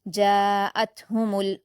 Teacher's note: تا پر جزم ہے تو ہم قلقلہ کے ساتھ نہیں پڑھیں گے کیونکہ یہ حروف قلقلہ میں نہیں آتا، جاءتہم ایسے پڑھیں گے۔